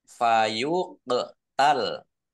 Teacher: qaf sukun bacaan kolkolah dibaca memantul ditampakkan pantulannya